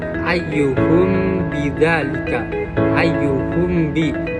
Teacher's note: dinamakan syafawi itu karena makhraj dari huruf mimnya itu, dari huruf mim sukunnya itu berasal dari bibir ketika bertemu dengan huruf ba · huruf mimnya itu terdengar seperti seakan-akan itu seperti didengungkan gitu, seperti terdengungkan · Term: ikhfa syafawi